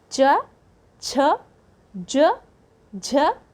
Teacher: तालु से जब हम बोलते हैं, मुंह के जो ऊपरी छत का जो पिछला भाग है वह बोलने में काम में आता है